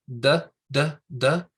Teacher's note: Look at where the tip of your tongue is. It's kind of hitting right behind your teeth, up toward the back there. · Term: D sound